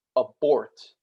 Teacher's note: So for instance, in English, you say like abort, you just say the bort in abort louder and a bit more forcefully and a little bit longer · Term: stress accent